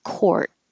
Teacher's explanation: You won't hear the final T in court because you don't have to. You can hold your tongue in the T position if it's the last word in the sentence or there's a consonant after it.